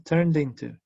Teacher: No es turned into, es turned into. Unió la D con into.